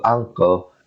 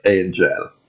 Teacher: We pronounce it halfway, as in the example angle, and not as a 100% noon sound like the word angel. Yeah? Then after we make the noon sound halfway, then we pronounce it with gunna. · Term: Ikhfaa